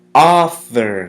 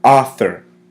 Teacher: the emphasis is placed on the first syllable author notice how the U it's silent it's more like ah